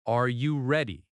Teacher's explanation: Rising tone shows a question.